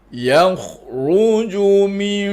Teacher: Bibir tu jangan ditutup sampai tekan kuat. Tutup sikit je tapi tak tekan kuat. Tapi dengung dia tetap di hidung, jangan di bibir.